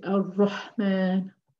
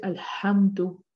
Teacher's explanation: In the second case, what we have is a lam and a hamzatul wasl, and we will put a fatha on there, and we will say alhamdu, and we will say ar-Rahman. So we are dropping the lam in Shamsiyah and we are pronouncing the lam in Al-Qamariyah